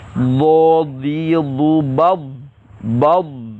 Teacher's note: istiqalah memanjangkan makhraj huruf dhad sehingga bertemu dengan makhraj huruf lam.